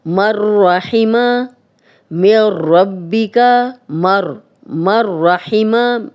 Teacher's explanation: میم اور را مل رہے ہیں، ادغام ہو رہا ہے لیکن غنہ نہیں ہو رہا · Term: ادغام بلا غنہ